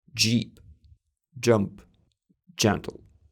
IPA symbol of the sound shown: dʒ